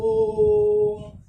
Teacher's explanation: स्पष्ट है कि इस ओ को आप 2 सेकंड की बजाय 3 सेकंड में पढ़ रहे हैं, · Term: प्लुत स्वर